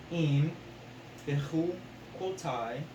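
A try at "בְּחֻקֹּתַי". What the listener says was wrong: Bechu quote. Because you got to remember, since the yod is at the end, the patak is a long A sound. Why would it be an I sound?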